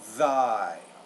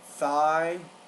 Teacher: the th the interdental voiced and voiceless consonant